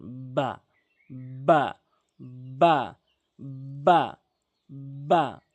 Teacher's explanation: দুই ঠোটের ভেজা অংশ ভেজা অংশ মিলিত করে এভাবে উচ্চারণ করবেন